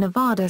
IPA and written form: nəˈvædə (Nevada)